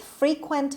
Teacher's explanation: the stress is on the first syllable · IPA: /ˈfriːkwənt/